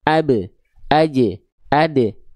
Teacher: Ba jim dal punya sifat qalqalah tapi pantulannya e kan bunyinya karena mereka huruf tipis